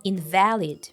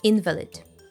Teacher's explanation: The stress falls on the second syllable, invalid.